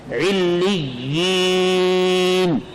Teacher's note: جب اس لفظ پر وقف کریں گے تو نون کا زبر جزم سے تبدیل ہو جائے گا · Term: وقف بالاسکان